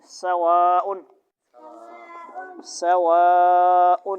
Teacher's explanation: سواء علیہم، واو پہ ہونٹ کیا ہوں گے، گول، سواء، سواء، سین آواز تیز آئے گی پتلی